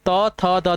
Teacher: त, थ, द, द आपके दंत हैं